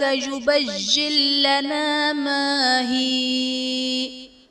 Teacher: یبین لنا میں نون ساکن کے بعد حروف یرملون میں سے لام ہے تو یہاں پر ادغام بلا غنہ کا قاعدہ ہوگا، یعنی نون ساکن میں ہم غنہ نہیں کریں گے